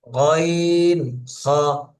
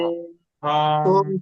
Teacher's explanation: কাফ হলক হতে কফ মাখরাজ, হলক মানে কণ্ঠনালী থেকে, হলকের শেষ হইতে উচ্চারিত হবে গইন খ।